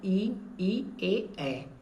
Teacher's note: इनका उच्चारण करने पे जीभ के अगले भाग पे जोर पड़ता है। इसलिए इसे अग्र स्वर कहते हैं।